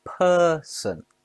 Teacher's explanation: Person has two syllables. The stress is on per